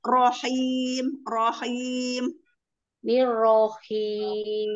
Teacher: Jadi rohnya jangan dikasih mad, jangan seperti ada alif. Langsung aja rohim, rohim.